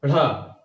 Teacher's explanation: ताल ऊपर छूते हुए रगड़ के बाहर की ओर फेंक दी जाती है। इसीलिए इसको कहा जाता है उत्क्षिप्त। · आपकी जीवा पहले ऊपर, ताल ऊपर छूते हुए, स्पर्श करते हुए बाहर की ओर फेंकी जाती है, ढ, ताल ऊपर छूते हुए रगड़ के बाहर की ओर फेंक दी जाती है। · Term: उत्क्षिप्त व्यंजन